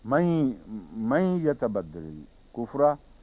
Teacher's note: بعض جگہ نون مدغم مکمل نہیں ہوتا بلکہ نون کی بجائے نون غونہ بن جاتا ہے، یعنی ناک سے نکلنے والی آواز بن جاتا ہے